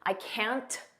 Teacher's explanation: Notice we don't push out that T. I can't. Just don't push it out.